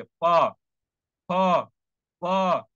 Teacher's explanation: तो प वर्ण आपके होंठ से टकराएगा